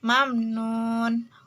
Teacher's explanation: Izhar syafawi karena mim mati menghadap huruf nun. Cara membaca izhar syafawi itu huruf mim matinya dibaca jelas atau tidak didengung. Mat aridil disukun karena mat tabi'inya waw mati setelah domah menghadap huruf hidup.